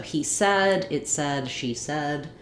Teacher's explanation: in this word it changes to said the e sound. So it rhymes with words like red or head.